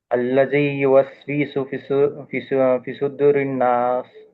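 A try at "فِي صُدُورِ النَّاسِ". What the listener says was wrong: ఇక్కడ యామద్ ఉంది అని చెప్పారు కానీ మీరు అప్లై చేయట్లేదు. అల్లజీ యువస్విసు ఫీ సుదూరిన్ నాస్. అల్లజీ యువస్విసు ఫీ సుదూరిన్ నాస్. అల్లజీ. ఇక్కడ రెండు హరకాతులు కొంచెం స్పష్టంగా వినపడేటట్టు పలకండి.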